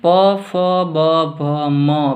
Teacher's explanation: બંને હોઠ સ્પર્શ છે આમાં એટલે આને હોષ્ઠીય વર્ણ કહેવાય છે